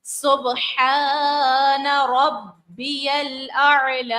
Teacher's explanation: سبحان، با کو ظاہر کریں گے، الف مدہ ہے، کھینچیں گے، با پھر جماؤں کے ساتھ ادا کریں گے کیونکہ تشدید ہے، اور اس کے بعد جو ہے عین کو ظاہر کریں گے اور لام کو کھینچیں گے